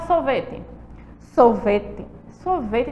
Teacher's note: sorvete tem um som de i no final